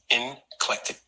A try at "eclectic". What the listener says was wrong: It's eclectic. There's no N in it.